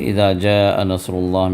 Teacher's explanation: جاء میں یہ مد متصل ہے، تو 4 یا 5 حرکت تک کھینچنا اس کو واجب ہے